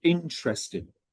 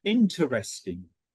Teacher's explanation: I actually say the second syllable where a lot of people don't.